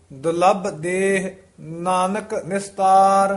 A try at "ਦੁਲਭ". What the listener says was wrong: ਦੁਲੱਭ ਕਸ ਕੇ ਉਚਾਰਨ ਕਰਨਾ ਹੈ। ਦੁਲੱਭ ਦੇਹ ਨਾਨਕ ਨਿਸਤਾਰ।